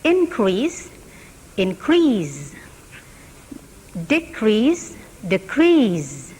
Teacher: the first syllable of the noun has primary stress, but the second syllable, but the second syllable of the verb has, uh, primary stress.